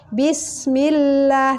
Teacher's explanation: lam jalalah tarqiq itu dibaca tipis